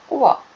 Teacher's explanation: ದಂತೋಷ್ಠ್ಯ ಅಂದರೆ ಹಲ್ಲು ಮತ್ತು ತುಟಿಯ ಸಹಾಯದಿಂದ ಹುಟ್ಟುವ ಅಕ್ಷರಗಳು